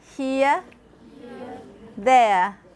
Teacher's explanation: standard BBC English is not rhotic and has diphthongs going from a vowel near the outside of the vowel space toward the central vowel schwa. In words such as here and there, these are transcribed as here, here, and there, there.